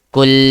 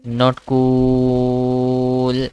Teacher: I'm not stretching the cool. I'm stretching L.